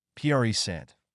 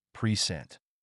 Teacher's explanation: present as a noun is stressed on the first syllable, present, but as a verb, it's stressed on the second syllable, present. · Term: word stress